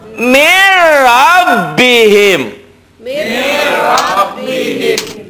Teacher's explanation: Jadi bunyi nun matinya enggak ada. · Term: idgham bila gunnah